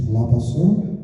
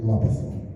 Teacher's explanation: And also we get a transformation of theta to sigma, for example, in Maniot lapaso compared to Standard Greek lapatho.